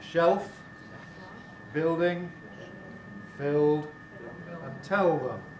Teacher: We all use a rather darker L before consonants, and finally, that is elsewhere, so in a word like shelf, building, filled, and tell them.